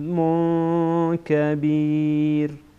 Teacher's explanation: بعد از تنوین کاف آمده اینجا اخفا می‌کنیم